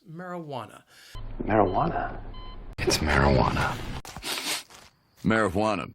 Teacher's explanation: The word has four syllables, and the stress is on that third syllable, that wa